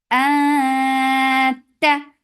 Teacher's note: for fatha upon jaws, the sound is very sharp. No flow of sound here.